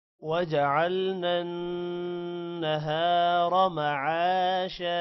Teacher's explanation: نہارا ہا کے بعد الف لمبا کریں گے را کو موٹا کرنا ہے را کو لمبا نہیں کرنا